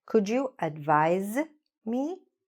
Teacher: even though it's written with an S, we pronounce it like a Z